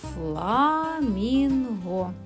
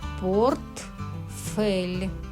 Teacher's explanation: Покладіть руку до ротика і спробуйте вимовити звук. Повітря виходить, але йому заважають губки і зубки. Це перешкода, тому звук ф приголосний. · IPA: [ф]